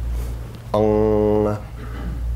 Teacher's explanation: The ONG or the NG sound, Ong, creates a nasal vibration in the head chamber.